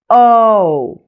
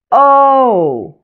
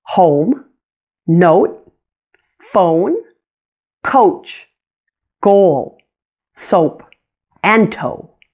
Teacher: also a diphthong or a blend of two vowel sounds Oh notice how it glides between an O and a you sound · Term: long o